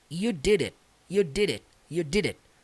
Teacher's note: O D aqui acaba ficando com som de R